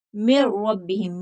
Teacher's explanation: نون کی آواز جو ہے وہ حرف کے مخرج میں پوشیدہ کر دیں گے، نون کی آواز ظاہر نہیں، من ربہم نہیں پڑھیں گے، من ربہم، میم کو را سے ملائیں گے، نون کی آواز نہیں آنی چاہیے۔ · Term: ادغام بلا غنہ